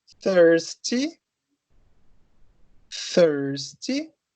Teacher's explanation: Então, aqui são unvoiced, né? Lembrando só. Então, não tem voz, é só vento.